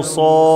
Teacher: فيها مد لازم ست حركات